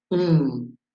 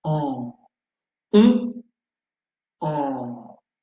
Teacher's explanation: Pour faire la différence entre ces deux voyelles nasales, on et en, il faut savoir que pour on, les lèvres sont arrondies, on, et les muscles sont tendus. Alors que pour en, les muscles sont relâchés et les mâchoires aussi vont tomber